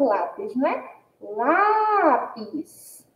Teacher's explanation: A gente já percebe aí que a sílaba tônica é a sílaba lá. E aí, diante da localização da sílaba tônica, a gente também percebe que lápis é uma palavra paroxítona, porque a sílaba tônica está localizada aí na penúltima sílaba.